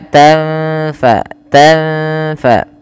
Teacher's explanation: tanfa nun sukun bertemu fa, samarkan nunnya ketemu dengan huruf fa